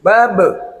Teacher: Nah, babe ini kena qalqalah kubro ya, mantul suaranya untuk ba apabila di akhir kalimat. Huruf ba dimatikan di akhir kalimat kena dipantulkan dan itu qalqalah yang sangat besar namanya qalqalah kubro.